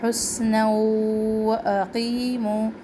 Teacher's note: حسنا سین میں سختی اور سیٹھی یہاں پہ بھی ادغام کر رہے ہیں. تنوین کو واو تشدید سے ملا رہے ہیں